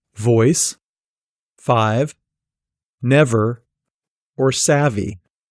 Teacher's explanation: this sound is made by partially blocking the airstream with your lower lip and your upper teeth. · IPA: /v/